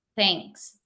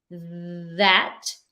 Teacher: you're not going to feel any sound when you say thanks. But when you say that, then it's going to vibrate.